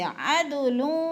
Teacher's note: عدل پہ قلقلہ کریں گے کیونکہ دال حروف قلقلہ میں سے ہے، ہلا کے پڑھیں گے